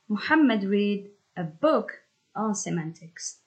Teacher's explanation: Muhammad and a book are both stressed.